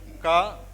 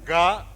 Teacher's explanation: when you say ga, the articulation is the same. It's articulated from the throat.